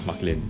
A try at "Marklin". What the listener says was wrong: It's a R, right? You have to pronounce the R, right? Marklin.